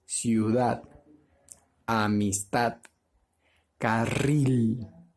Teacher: la mayor fuerza de voz está en la última sílaba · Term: tilde prosódica